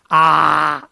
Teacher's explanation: विवृत स्वर में मुंह पूरा खुल रहा है, जितना मैक्सिमम खुल सकता है।